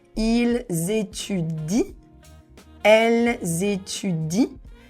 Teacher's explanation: the ENT, we don't pronounce it. We will just say, ils étudient, elles étudient, and here the ENT is completely silent.